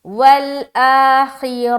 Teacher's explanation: را کو موٹا رکھیں گے، خا کو بھی موٹا رکھیں گے۔